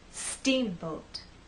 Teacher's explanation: The first part of the word is the stressed part. So when we say steamboat, I want the first part to be loud and the second part to be softer.